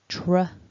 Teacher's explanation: curl back the tongue for the R, no trill necessary here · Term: tr cluster